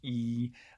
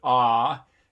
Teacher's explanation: ah versus e or especially ooh your mouth opens up more for an ah